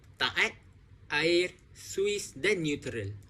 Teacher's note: vokal berganding dia terpisah antara suku kata la dan ut. Dalam perkataan la dan ut, huruf vokal A dan U mereka terpisah.